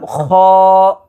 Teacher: খয়ের মাখরাজ হলকের শেষ হইতে খ উচ্চারিত হয়